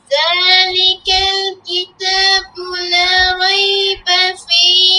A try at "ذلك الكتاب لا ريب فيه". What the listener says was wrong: যালিকাল, দেখো একবারে পাতলা হবে। যালিকাল কিতাবু লা রাইবা ফীহ,